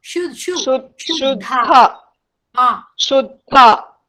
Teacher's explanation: One da is Alprana, other da is Mahaprana, and elongation is there for both the das elongation.